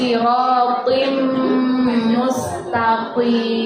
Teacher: Jadi bukan sirotim, tidak. Kalau tim biasa berarti hurufnya ta, tapi di sini to. Jadi tebal.